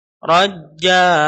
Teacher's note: Ini ra-nya ra tafkhim lagi, ra dibaris fathah, ra dibaca tebal. Kemudian ja, ini kalau mau diwaqaf, maka tanwinnya hilang diganti dengan panjang.